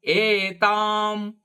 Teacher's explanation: ಏ ದೀರ್ಘವಾಗಿ, ತಾ ಕೂಡ ದೀರ್ಘ, ಅನುಸ್ವಾರ ಅರ್ಧಮ್ಮ